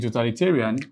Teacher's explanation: The TA is the stressed syllable according to the rule.